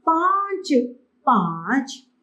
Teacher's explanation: चंद्रबिंदु के उच्चारण के लिए गला और नासिका दोनों का ही प्रयोग करना पड़ता है।